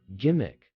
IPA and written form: ˈɡɪmɪk (gimmick)